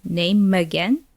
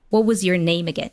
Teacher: M from name, it is linked to the schwa sound from again